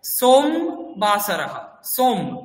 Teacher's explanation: ম এর পরে অকারটা আপনি উচ্চারণ করছেন না তার কারণ কি হলন্তটা রয়েছে